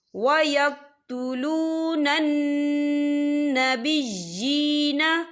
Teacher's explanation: یہ دیکھیں وَيَقْتُلُونَ، نون مشدد ہے، یہاں پر غنہ ہوگا، اور جینا یہاں پہ یا کے نیچے کھڑی حرکات ہے، تو ہم اسے 2 یا 3 حرکت کے برابر کھینچے پڑھیں گے